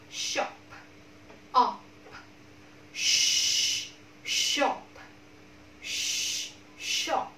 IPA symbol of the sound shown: ʃ